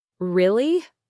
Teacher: With a rising surprised tone, almost like a little gasp of wonder.